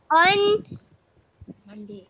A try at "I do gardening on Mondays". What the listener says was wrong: Be clear about the S at the back there.